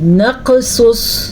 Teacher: پھر سے سیٹی کی آواز آ رہی ہے. بے شک ہم نے سواد کو پور پڑھا ہے پھر بھی سیٹی کی آواز آ رہی ہے.